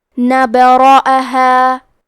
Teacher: حرف الراء پہ زبر ہے، لہذا یہاں را کا حکم ہے تفخیم، تو ہمیں حرف الراء کو موٹی آواز میں پڑھنا ہے۔ الف پہ زبر ہے، لہذا ہمیں حمزہ کو ظاہر کرنا ہے۔